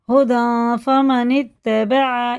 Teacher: یہ الف بالکل نہیں پڑھا جائے گا، لکھنے میں پڑھنے میں نہیں آئے گا، یہ دونوں الف خالی ہیں.